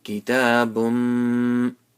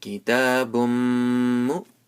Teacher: So we'll make Idgham, Gunna with a long nasal sound. Kitabum, Mim pesh mu, Kitabum mu.